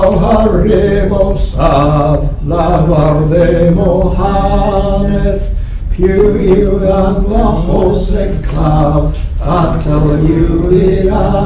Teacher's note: Yes, I would tend to roll the R's.